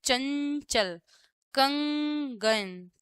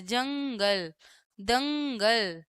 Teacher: जो अनुस्वार होते हैं ना, उनका उच्चारण नाक से होता है